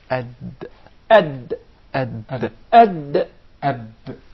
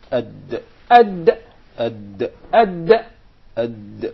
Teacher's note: So the Dal is pronounced from the top side of the tip of the tongue.